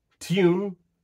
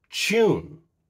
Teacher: the same word depending on the dialect can feature yod dropping yod coalescence or neither such as the case for the word which in North American dialects is pronounced tune.